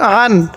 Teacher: আইনটা একটু চাপ দিয়ে পড়বো। অনেকে আমরা আইনগুলাকে হামজা পড়ি।